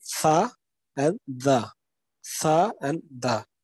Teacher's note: dental sounds where we use, okay, our teeth and our tip of the tongue